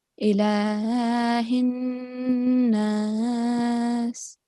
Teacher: we are going to join the kaf, mutaharrik, straight to noon mushaddad, malikin nas, like that.